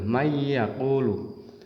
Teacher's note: pas di huruf ya seolah-olah isinya double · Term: idgham bi ghunnah